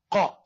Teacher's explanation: Soft palate will be touched by pronunciation of qaf and kaf.